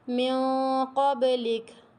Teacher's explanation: اب یہ کاف ہے تو کھ کی آواز آئے گی آخر میں نا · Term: ہمس